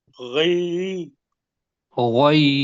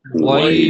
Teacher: پہلے ہونٹ گول کر لیں پھر اس کو پڑھیں گے تو غوئی بنے گا